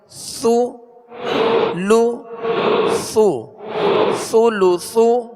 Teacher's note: اس میں سختی نہ ہو، ثا کو نرمی کے ساتھ اور باریک پڑھیں گے